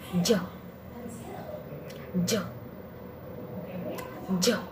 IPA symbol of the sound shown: dʒ